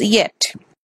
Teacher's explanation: it is palatal sound tongue and roof of the mouth is a place of articulation